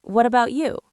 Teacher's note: Notice how my voice goes up at the end of the question. "What about you?" Rises.